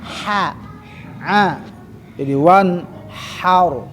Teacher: Ha, ingat wastol halki. Jadi ada di tenggorokan tengah, ya.